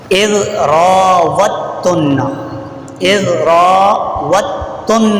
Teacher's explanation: واو کے بعد دال نہیں پڑھی جائے گی، واو سیدھا تا سے ملے گا کیونکہ تا کے اوپر تشدید ہو، اذ راوتن، 13واں پارہ ہے